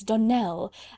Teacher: the correct pronunciation of our name is Donell Accent on the last syllable